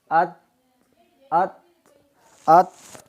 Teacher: سامنے والے دانتوں کی اندر والی سائڈ سے تو تا ادا کریں گے